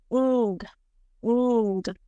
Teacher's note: And this means that this sound is produced by the contact of the back of the tongue and the soft palate. And in manner of production, it is nasal again, and it is voiced